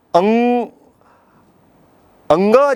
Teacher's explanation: कंठ के साथ नासिका से भी हम ध्वनि निकलती है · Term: अनुनासिक वर्ण